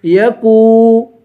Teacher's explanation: کاف کو باریک پڑھیں گے اور واو کو ایک الف کی مقدار کھینچ کے پڑھیں گے